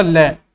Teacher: ल बोलोगे तो हमारी जीभ ऊपर उड़ जाएगी और हमारी हवा जो है ना आसपास से निकल जाती है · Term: पार्श्विक ध्वनि